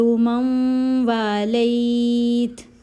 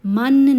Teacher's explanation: یہ جو نون ہے یہ سائلنٹ ہو جائے گا کیونکہ یہاں ادغام کا قاعدہ لگ رہا ہے، میم کو واو سے ملایا جائے گا غنہ کرتے ہوئے۔